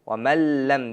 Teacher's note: nun tamg'asini lam tamg'asiga idg'om qilib, kirgizib, lam tamg'asini tashdidli qilib o'qiymiz